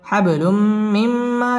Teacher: পড়তে হবে হাব বা কলকলার হরফ ধাক্কা দিয়ে পড়তে হবে হাবলুম তানবিনের বামে মিম আসছে মিম ইদগামে বা গুন্নার হরফ গুন্না সহ মিলিয়ে পড়তে হবে